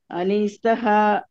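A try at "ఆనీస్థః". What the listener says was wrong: దీర్ఘం ఆణిస్తః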